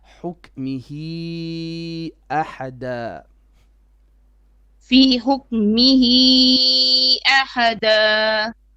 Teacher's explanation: Now here you have a mad munfasil. You have to do 4 beats because we have a long vowel before alif